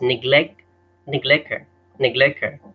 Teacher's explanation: he drops or miss misses out the T and misses out the H